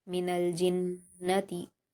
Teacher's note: मिनल, जीम पर हरकत है जल्द पढ़ेंगे, नून को तशदीद है तो जीम से मिलाएंगे। मिनल जिन, नून पर हरकत है जल्द पढ़ेंगे और गुन्ना के साथ सख्ती के साथ पढ़ेंगे। मिनल जिन्नति, ता पर हरकत है जल्द पढ़ेंगे।